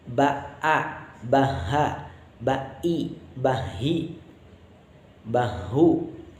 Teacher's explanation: Hamzah dan ha itu hurufnya. Jadi ketika kita mengucapkan huruf hamzah, mengucapkan huruf ha, itu harus terasa sampai ke aqsal halki, ke pangkal tenggorokan